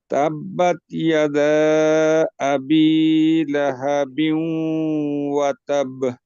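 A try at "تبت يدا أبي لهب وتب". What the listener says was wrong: এই দেখেন তাবে, এখানে তাসদিদ আছে, তাসদিদের উচ্চারণ আসে নাই।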